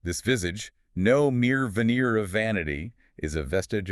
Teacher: That's an exercise in V sounds. Labiodental fricatives, just an overload of them.